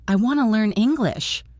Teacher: Want to becomes wanna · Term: reductions